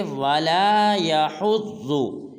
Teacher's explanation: يَحُضُّ کو لمبا نہیں کرنا اور ولا کو ایک الف مقدار لمبا کرنا ہے